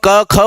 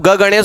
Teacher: जब हम क ख बोलेंगे ना तो यहां पे कंपन नहीं होता, और जब ग गणेश बोलेंगे तो पेट में से एक झटका आता है